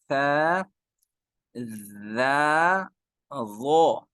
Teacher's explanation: جب زبان کی نوک اوپر والے 2 دانت ان کے بیک سائڈ والا جو سرا ہے وہاں ٹچ ہونی چاہیے، تو یہ 3 لیٹرز ادا ہوں گے